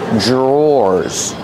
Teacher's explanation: Dr makes a j sound J J plus the r together J drawers or like door and floor drawer one drawer two